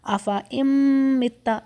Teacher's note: حمزہ direct جا کے میم پہ ملے گا اور ساتھ غنہ ہوگا. افَإِن مِتَّ، نون کی آواز کو ہم چھپاتے ہوئے میم پر جا رہے ہیں، ٹھیک ہے، افَإِن مِتَّ.